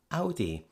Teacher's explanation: we would tend to use our own vowel from the words mouth, sound, bow, etc. Of course, that's not exactly like the German Au, but what we're doing is we're taking the nearest similar sound from the available sounds in our language.